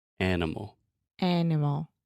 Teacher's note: The schwa occurs in that unstressed middle sound.